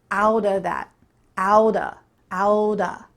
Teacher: The word of becomes a.